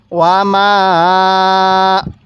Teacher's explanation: মিমের মধ্যে 3 আলিফ টান দিব।